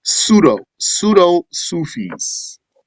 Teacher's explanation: And the P is silent. So, you don't say the P. You just say the S.